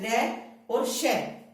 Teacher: रे और श, इसका उच्चारण स्थान क्या हो जाएगा, मूर्धा हो जाएगा।